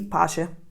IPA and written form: ˈpatʃe (pace)